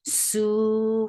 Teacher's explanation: Su for the circle lips, make it 2 counts long.